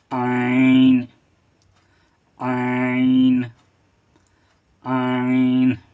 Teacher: ये आइन है और ये हलक से अदा होगा।